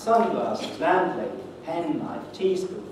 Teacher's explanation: the main productive rule, which is to put the stress at the beginning of a compound